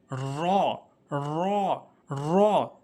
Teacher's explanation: র র র অর্থাৎ জিহ্বার আগাটা উল্টিয়ে, একটু মনোযোগ সহকারে বুঝবেন, জিহ্বার আগাটি উল্টিয়ে উপরের তালুর সঙ্গে র র র।